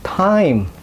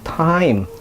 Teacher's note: huruf T ini ada letupannya